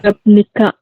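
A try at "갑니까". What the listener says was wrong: gamnika bukan gapnika, ya. Masih ingat kata bahasa gamnika seperti ini ya. Jadi bacanya gamnika, teman-teman. Nah, ini ya, tulisannya gapnika betul, cuma dibacanya gamnika.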